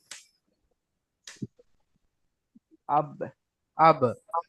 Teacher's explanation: দুই ঠোটের শুকন অংশ মিলিত উচ্চারণ হয় বা